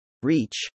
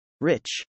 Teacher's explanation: the sound in reach must be pronounced longer than the sound in rich